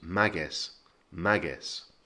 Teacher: And two things to note, there's an accent on the A, so the push goes on the first syllable. And the second thing is that it ends in a Z, so we again get that kind of soft S sound.